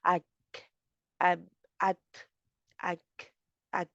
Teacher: तो इस तरह जी आवाज़ जो है इसकी थोड़ी-सी हो जाएगी, आपको हवा बाहर आ जाएगी ना, तो जिसकी वज़ह से आवाज़ में आपको फ़ील होगा कि हम परे कर रहे हैं मखरज से ज़ुबान को। ज़ुबान की जड़ को काफ़ के लिए होता है और ता के लिए ज़ुबान की नोक को परे होता है